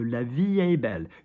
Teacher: We don't pronounce the T, do we? Because it's not followed by a vowel.